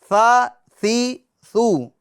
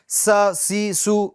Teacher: اس میں سیٹی کی آواز نہیں آنی چاہیے اس حرف میں ثا میں، ٹھیک ہے۔ س سی سو اس طریقے سے ادا نہیں کرنا بلکہ ثا ثی ثو۔